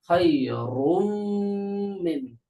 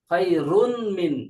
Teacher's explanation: তানভীনটা vanish হয়ে গেছে র সরাসরি মিমের সাথে যুক্ত হয়ে গেছে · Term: ইদগাম